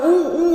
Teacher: मग असं म्हणजे इथे संवृत्त स्वर कशाला म्हटलं आपण, तर जेव्हा जीभ आतमध्ये जीभ उंच उचलली जाते, परंतु हे मुखविवर उघडलं जात नाही, उलट ते काय होतं, आकुंचित होतं. म्हणजे असं ऊ म्हणताना बघा काय होतं, ते ओठ आणखीन जवळ येतात, आकुंचित होतात, हे आकुंचन पावतं, असा चंबू होतो तोंडाचा.